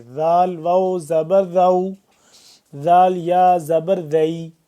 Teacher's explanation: ذال کو نرمی سے پڑھیں گے، زبان کو دو دانتوں کے درمیان تھوڑا سا باہر کی طرف نکالیں گے